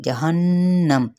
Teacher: हा की पेश को नहीं खींचेंगे। जहन्नम, नून पे गुन्ना किया जाएगा